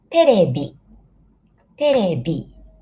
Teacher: In Japanese, we don't have V in English, so we pronounce like B.